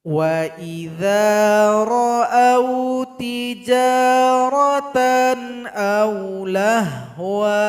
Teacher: Sedangkan cara baca yang kedua, kita berhenti saja pada kalimat sebelum nun kecil ini. Sehingganya waw dipanjangkan dua harokat.